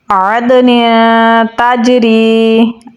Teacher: حروف کے درمیان میں ہے تو قلقلہ کمزور ہوگا. نون پہ ہم اخفا کریں گے کیونکہ تنوین کے بعد تا ہے